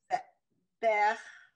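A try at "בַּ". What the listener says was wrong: So close. Look at the vowel under bet. It's a ah. It's an ah under the bet.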